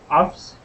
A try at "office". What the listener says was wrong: you were pronouncing the a or the e or the uh the Portuguese a sound afterwards saying office